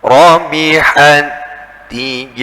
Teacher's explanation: jadi langsung seperti tasydid, bukan didesiskan dulu.